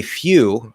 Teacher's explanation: If we say, you can go straight from y into oo. Okay, now the Y sound sounds very similar to the E sound because it's kind of like it basically is an E sound, just like farther back, and the exact tone shape I would say is maybe just a little bit different.